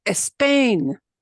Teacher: it is almost impossible for Native Spanish speakers to eliminate that e in front of s p s t and SP when they start out a word